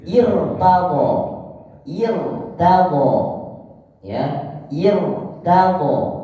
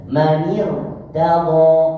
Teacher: Kalau masuk kalimat sebelumnya maka hamzah tidak terbaca. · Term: hamzah wasol